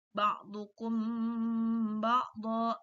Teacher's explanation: Maka ketika kita membaca ba'dukum ba'dha, mim mati bertemu ba, maka di situ harus kita tahan juga, ada dengungnya, disamar-samarkan. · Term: ikhfa syafawi